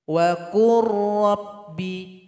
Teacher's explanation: Nah, maka dia mesti dibaca idgham mutaqaribain. Lam ini sudah melebur kepada huruf ra.